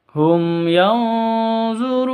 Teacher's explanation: Mim mati bertemu dengan ya, bacanya jelas, terang, tidak boleh disentak, tidak boleh didengungkan.